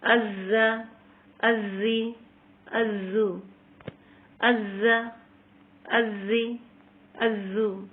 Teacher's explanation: یہاں پہ دیکھیے زا کو سختی سے پڑھنا ہے اور اس میں سیٹی سے بجائے گی